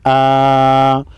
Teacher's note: حمزہ کے اوپر کڑا زبر ہے، کڑا زبر کو 1 الف کے مقدار کھینچ کر پڑھیں گے